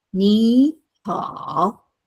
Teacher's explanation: the first third tone is expressed as 3-5, which is the second tone